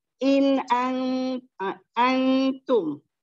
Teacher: Nun mati berjumpa dengan ta, hukumnya juga ikhfa hakiki, dibaca dengung 2 harakat